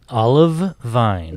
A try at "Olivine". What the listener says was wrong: No, there's no E. It is olive, but it's more like O-L-I than vine. Olivine.